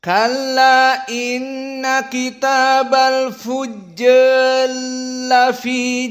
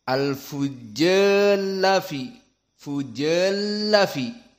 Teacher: Maka al-fujjar lafi diidghamkan menjadi Kitabal fujjal lafi sijjin. Jadi fujjal lafi, ditasdidkan lamnya dan dipanjangkan ja-nya seperti mat tabi'i. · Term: idgham al-kabir